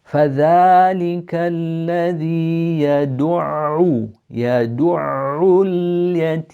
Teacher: So here you have an ayn, you have a shadda on it, which means that for the first ayn we go back to the sukoon, which means our lips come back and then they go forward for the dhamma